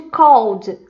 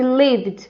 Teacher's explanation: só com um D no final mesmo, um D bem suave